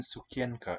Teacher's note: listen to the n in tsukiyanka it's dental